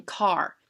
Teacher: we do not hear the sound of a because it's controlled by the r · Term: bossy r